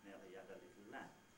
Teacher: each syllable more or less the same amount of time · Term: french accent